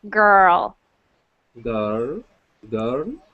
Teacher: work on getting that R to stop moving it'll have to go back a little bit and stay still